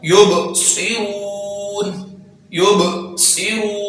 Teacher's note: सौद है तो इसको सीटी के साथ और पूरा अदा करेंगे